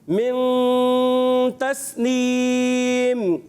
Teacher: نون چھپ کے ادا ہوتا ہے, غنہ ناک میں آواز لے کے جاتے ہیں · سین کو باریک رکھیں گے, اس کو سیٹی کے ساتھ ادا کرتے ہیں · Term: اخفا